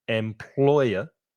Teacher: Employer, 3 syllables, the stress is in the middle